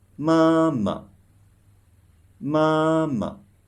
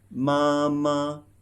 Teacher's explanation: it's called neutral tone or softer tone. So you should pronounce it softly and shortly.